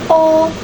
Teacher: Final yang kedua yaitu final O, termasuk ke dalam vokal belakang dengan posisi lidah tengah dan bentuk bibir bulat, juga termasuk ke dalam sonoritas tutup.